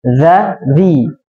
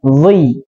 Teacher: Nah, tebal tipisnya. Kalau za itu tipis, za di. Nah, kalau dho ketika di itu harus tebal, dhi.